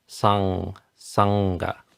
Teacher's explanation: the back of the tongue pressing up against the mouth, and the air comes out the nose to create this vibratory sound. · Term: the NG sound